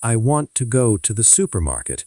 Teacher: notice stress on want and supermarket, while smaller words like to andthe are lighter. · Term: word stress